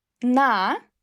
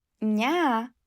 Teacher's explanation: Na, n sound pretty hard. Ня, n already sound pretty soft.